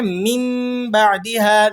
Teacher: نون ساکن اور اس کے بعد حرف با آ گیا، تو نون ساکن کے بعد اگر حرف با آ جائے تو وہاں نون ساکن کی آواز کو ہم نے میم سے چینج کر کے پڑھنا ہوتا ہے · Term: اقلاب